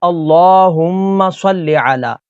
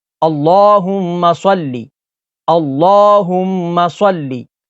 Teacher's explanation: اس کی جو شروع میں پہلی غلطی ہے، ہماری اکثریت جو ہے وہ پڑھتی ہے اللہم صلی علی، تو یہاں پر صلی پڑھتے ہیں، تو لام زیر لے پڑھتے ہیں، تو لام زیر لے نہیں بلکہ لام زیر لی۔ تو اردو میں لے پڑھا جاتا ہے اور عربی میں لی پڑھا جاتا ہے، اور اس کو لمبا بھی نہیں کرنا، یعنی صلی تو ایسے لمبا بھی نہیں کرنا۔